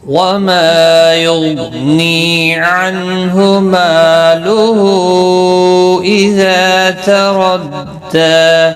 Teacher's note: وما ما الف مدہ ہے، غین مستعلیہ ہے، پر پڑھنا ہے